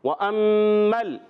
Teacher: میم کو لام سے ملائیں گے، لام ساکن رہے گا، ہلے گا نہیں